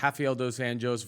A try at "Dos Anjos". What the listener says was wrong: I don't believe it's Dos Anjos. I believe it's Dos Anjos, isn't it? J pronounced with an H. Isn't that the J pronounced as an H? Because you have like a junta. It's not a junta.